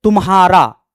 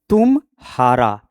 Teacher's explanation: तुम्हारा कहने से तुम्हारा का बोध हुआ। और इसी को तोड़ करके बोलेंगे तुम हारा। यानी तुम हार गए हो। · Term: अनुतान